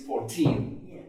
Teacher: if 14 is alone, stands on its own, it's 14 stress on the last syllable. But when it's used followed by another word in this case as an adjective, we change the stress.